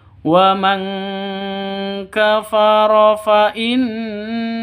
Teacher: Di sini ada nun tasydid. Nun tasydidnya berdiri sendiri. Artinya gunnah musyaddadah, dengung dua ketukan.